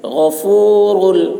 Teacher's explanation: غین حلق سے اس کی آواز موٹی ہوگی. غفور را پر ہوگی.